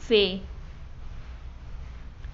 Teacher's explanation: और फिर दूसरे जो है लब दंती, इसमें जो है निचले होंठों से ऊपर के दांतों पर हवा को रोका जाता है, मसलन फे। और फिर दूसरा है नोक जबानी, इसमें कौन कौन से हैं?